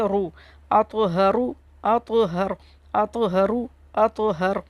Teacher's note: را کے اوپر پیش ہے، اسے را کو موٹا پڑھیں گے